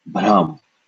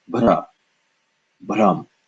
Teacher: bha being the aspirated B sound, this would be pronounced bhram.